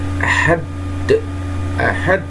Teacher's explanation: Itu qalqalah kubro, mantul huruf akhirnya.